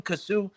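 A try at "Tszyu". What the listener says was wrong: calling him Kazoo? his name is Sue. Sue. The T is silent. It's not Kazoo.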